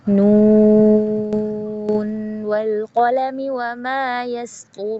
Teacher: Jadi si nunnya ini tidak diidghamkan walaupun dia nun sukun bertemu huruf waw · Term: izhar riwayah